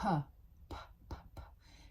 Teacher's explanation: It's a little bit more aspirated with the P.